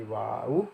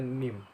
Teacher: tempat keluar hurufnya berasal dari pertemuan bibir atas dan bibir bawah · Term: asy-syafatain